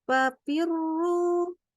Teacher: yang seharusnya kita baca fa, ini berubah jadi huruf P, karena ketemu bibir atas sama bibir bawah. Jadilah fa.